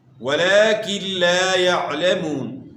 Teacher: لام کے اوپر کھڑا زبر ہے، اس کو آپ نے کھینچنا ہے